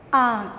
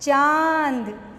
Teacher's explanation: जब भी हम चंद्र बिंदु की मात्रा वाले शब्दों का उच्चारण करते हैं तो हमारे नाक और मुंह से आवाज निकलती है · इन शब्दों का उच्चारण करने के लिए हमें नाक और मुंह दोनों का प्रयोग करना होता है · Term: अनुनासिक